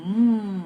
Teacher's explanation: the passage of the air now that i am producing is actually in the nose